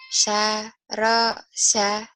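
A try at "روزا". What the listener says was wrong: bukan sarosa. Saroza. Zanya ya. Z. Saroza. Za.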